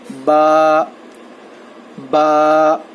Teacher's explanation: با دونوں ہونٹوں کے گیلے حصے سے ادا ہوتا ہے. با جو ہے دونوں ہونٹوں کے گیلے حصے سے ادا ہوتا ہے.